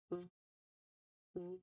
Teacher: The sound it makes is V. This is a continuous sound that uses your top teeth and the bottom lip. Now to make this particular sound, you press the edge of your top front teeth lightly against the inside of your bottom lip.